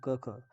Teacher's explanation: कंठ म्हणजे घशातून उच्चार होतो